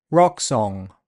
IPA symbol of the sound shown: ɒ